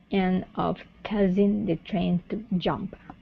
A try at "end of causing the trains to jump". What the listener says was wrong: Okay, instead of cause, open the mouth up. Cause. End of causing the trains to jump.